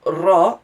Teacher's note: when you see a ra in Arabic, is a trilled r sound. Also present in Spanish as well, and also Somali and Urdu, I think, have them too, if you're familiar with those languages.